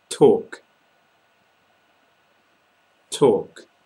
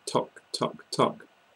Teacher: you're making the vowel sound in the middle nice and long I know some people who pronounce it more like tock tock